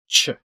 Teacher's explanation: It's actually two sounds stuck together in this case. It's a t and a sh.